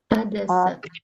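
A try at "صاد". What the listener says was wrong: Voilà, insistez juste sur le sod. Ad, so. Sans prononcer le nom de la lettre, hein. Toujours le son so.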